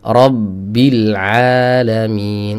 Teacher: Syiddahnya tetap tertahan tapi tidak terkunci. Ya, rabbil alamin. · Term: efek qalqalah